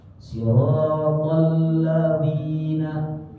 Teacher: Dzalnya adalah dzal yang ada titiknya itu, alladzina yang ujung lidah, ujung gigi seri atas.